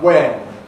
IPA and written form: wen (when)